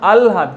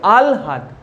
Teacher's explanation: হয়ের সঙ্গে লফলা অর্থাৎ ল যোগ থাকলে কি হচ্ছে দেখো, যে লয়ের উচ্চারণটা আগে হচ্ছে। যেমন আলহাদ, কিন্তু বানানের সময় কি লিখবে, আ হয় লয় আকার দ, উচ্চারণের সময় হচ্ছে কি আলহাদ।